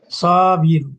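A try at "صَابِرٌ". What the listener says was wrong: Nah, panjang Pak. Jangan lupa panjangnya itu supaya kelihatan bedanya. Sobir ya.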